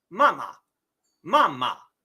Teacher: the first two characters are the character for mother so that has the long flat tone